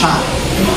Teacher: middle part of the tongue is raised and makes contact with the roof of the mouth or the hard palate. The sound is produced with a continuous flow of air, creating a hissing effect. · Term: shin